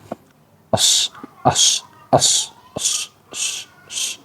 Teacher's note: Huruf shad itu memiliki sifat yang namanya sofir, ya, atau desis. Desis pada sofir huruf shad ini adalah mirip dengan desis angsa, ya.